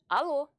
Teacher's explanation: the sound L is quite similar to the light l in English as in words light or lucky